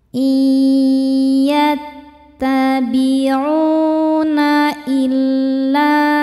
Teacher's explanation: hukumnya mad thobii zohiri karena ada wau sukun sebelumnya dommah. Cara bacanya panjang dua harakat.